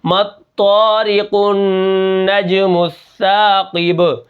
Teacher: النجم السا، قاف با زیر قیب، قاف کو موٹا کروں گا، آخر میں با کے اوپر قلقلہ ہے ، اور آخر میں جو وقف ہے وہ وقف بالاسکان ہے،